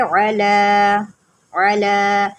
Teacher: یہ جو کھڑی زبر ہے نا، اس کو جو ہے نا آپ نے 1 الف کے برابر لمبا کرنا ہے۔ 1 الف کے برابر کا مطلب یہ ہوتا ہے کہ 1 سیکنڈ آپ لمبا کریں گے، سمجھانے کے لیے ہے تاکہ آپ آسانی سے سمجھ جائیں۔